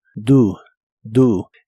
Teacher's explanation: El auxiliar do lo pronuncias como si la o fuese una u.